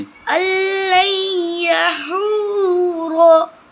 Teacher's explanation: إِنَّهُ ظَنَّ أَن اللَّن لام نون یا زبر لین، اس نون کو اس یا میں مدغم کر دیں گے، ہم ملا دیں گے اس میں